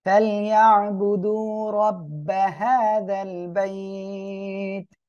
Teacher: আইনটা গলাটা চেপে উচ্চারণ করবেন